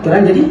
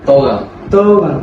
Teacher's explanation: Sekarang nak tanya boleh ceritakan sedikit tentang dialek Negeri Sembilan ni macam mana? Okey, dialek Negeri Sembilan ni kebiasaannya pada permulaan perkataan tu kita ubah kepada huruf O. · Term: TE jadi TO